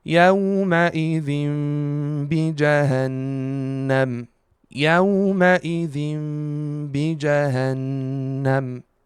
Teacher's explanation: Also, we have 2 Ghunnahs here. The Ghunnah of the Iqlab, Tanween followed by Ba in the next word, and the Ghunnah of the Noon Mushaddad.